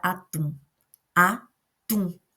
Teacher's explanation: Eu coloquei mais força no tum, que é a nossa última sílaba. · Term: palavra oxítona